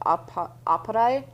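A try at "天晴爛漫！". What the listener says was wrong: Oh, you gotta roll the R. Aparte.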